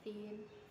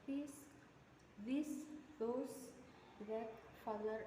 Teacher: Voiceless itu yang pas pengucapannya itu lebih smooth dan tidak ada getaran, sementara voice itu ada getarannya dan itu bisa dirasakan di kerongkongannya sini. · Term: dental fricative